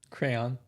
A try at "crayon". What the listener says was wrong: You say crown. I've caught you plenty of times. Yeah, you say crown. It's crayon. Crayon.